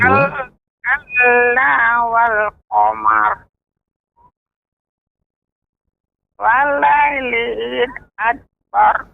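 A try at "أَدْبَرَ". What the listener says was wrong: Adbar, qalqalah pada dal. Walaili iz adbar. Ad. Ad, tidak ad, ya. Walaili iz adbar. Adbar.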